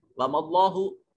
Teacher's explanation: کلمہ جلالت سے پہلے زبر آ رہا ہے، یہاں موٹا کر کے پڑھیں گے